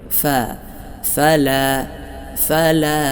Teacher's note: ഫാ മൊഴിയുമ്പോൾ മേലെ മുൻപല്ലിന്റെ താഴ്ഭാഗം താഴെ ചുണ്ടിന്റെ പള്ളയിൽ തട്ടുന്ന വിധമായിരിക്കണം